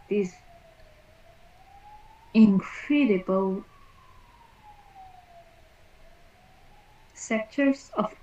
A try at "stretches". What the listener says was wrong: STR, like street, not setches. Stretches. Stretches. Street is double E, right? This is just one E. Stretches.